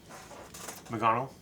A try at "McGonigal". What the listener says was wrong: McGonigal. There's an I in there, right?